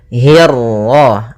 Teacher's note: hi-nya tipis, kasrah bertemu ra yang tebal. Nah, di sini kita namakan dengan ra tafkhim.